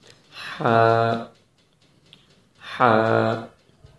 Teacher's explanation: زبان منہ کے اندر کسی بھی جگہ پر نہیں لگے گی، اور حلق کے درمیان سے آواز نکلے گی، حلق کی گہرائی سے نہیں نکلے گی جو سینے کی طرف ہے، کیونکہ اگر وہاں سے آواز نکلے گی تو وہ ہا بن جائے گا۔